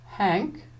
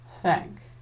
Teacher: Notice that the air is coming forward, but your tongue is staying perfectly still. Now watch as I change the H friction sound into a TH friction sound by aiming my tongue tip upwards a little.